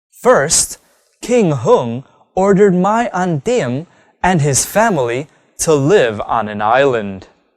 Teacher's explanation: saying the answers of a WH question by using the falling tone at the end of the statement